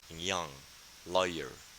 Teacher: grow bigger okay and the second one is palatal our tongue tries to touch the palatal zone